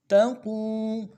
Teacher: قو میں واو مدہ ہے، واو ساکن سے پہلے پیش ہو، واو مدہ ایک الف دال میں کھینچیں گے، قاف کو موٹا کریں گے۔